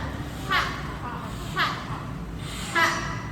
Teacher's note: Tenggorokan atas. Ha dibuka dan ditekan.